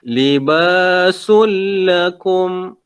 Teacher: Tanwin di sini, tanwin bertemu dengan huruf lam. Idgham bila gunnah.